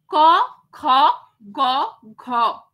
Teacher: মানে আমরা যে সমস্ত ব্যঞ্জন ধ্বনিগুলো উচ্চারণ করবার সময় দেখব যে জিহবার পশ্চাৎ ভাগ একদম কণ্ঠ থেকে উচ্চারিত হয়ে আসছে পশ্চাৎ ভাগ একদম কন্ঠের দিকে · জিহ্বার পশ্চাৎ ভাগ একদম কণ্ঠ থেকে উচ্চারিত হয়ে আসছে, জিহ্বার পশ্চাৎ ভাগ একদম কণ্ঠের দিকে মানে তীর করছে, সেইগুলোকেই বলা হয় কণ্ঠ ব্যঞ্জন ধ্বনি।